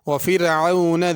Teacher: فرعون کی را باریک ہوگی، ذی میں ذال ہے، اس کو زا نہ پڑھا جائے، اوتاد کی دال پہ قلقلہ ہوگا۔